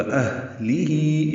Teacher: ہا بھی اقصی حلق سے ادا ہوگی اور اس میں ہمس ہوگا